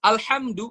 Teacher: ha itu pakai nafas kita yang paling lembut